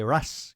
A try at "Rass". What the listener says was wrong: I'm pretty sure you're pronouncing that wrong. RASS? Is that right? RAS Games, yeah. You said Rash. But it's not your fault. It's because you're Greek.